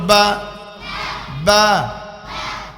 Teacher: বার মাখরাজ। দুই ঠোঁটের ভিজা অংশ হইতে।